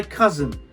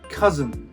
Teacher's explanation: So it's almost like the I doesn't exist. The S and the N hit each other very quickly. I'd like to introduce you to my cousin.